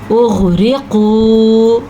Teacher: غین کو پر پڑھنا ہے قاف کو پر پڑھنا ہے کیونکہ یہ حروف مستعلیہ ہیں